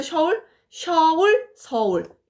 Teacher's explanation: 이중모음이 단모음화 된 유형을 얘기하는 겁니다